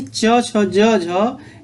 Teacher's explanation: च छ ज झ। ये जो ध्वनियाँ होती हैं ये स्पर्श संघर्षी कहलाती हैं